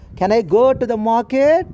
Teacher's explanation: Yes or no question should be expressed in rising tone.